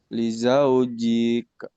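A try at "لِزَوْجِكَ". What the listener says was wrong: Kenapa panjang? Nggak ada yang panjang. Nggak ada. Ya, jangan dipanjangin.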